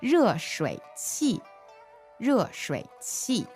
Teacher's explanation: So fourth tone, third tone, and then qi is fourth tone, right?